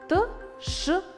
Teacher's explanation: голосовые связки не дрожат слышен шум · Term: глухие согласные звуки